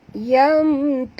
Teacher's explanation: Ta di sini huruf istifal, jangan tebal ya. Yang tebal ialah huruf ra ni ya.